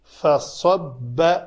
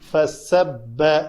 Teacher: فصب صاد اور سین میں فرق یہ ہے، دونوں کا مخرج ایک ہی ہے لیکن پر اور پتلا کرنے سے حروف جو ہیں وہ نمایاں ہو جاتے ہیں کہ کون سا حرف ادا کیا جا رہا ہے۔ تو صاد پر حروف میں سے ہے، پر کرنے کے لیے اوپر والا ہونٹ تھوڑا اوپر اٹھتا ہے، شفتین گول بالکل نہیں ہوتے۔